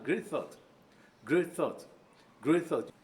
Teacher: you drop the sound represented by letter T and pronounce it great thought